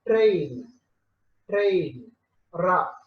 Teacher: To pronounce ra, your tongue touches and releases number of times. It is called trill.